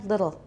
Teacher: it sounds a little bit like a child's pronunciation because we usually use a tap